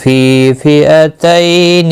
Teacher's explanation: فی یا مدہ ہے، ایک الف کے برابر کھینچ کر پڑھیں گے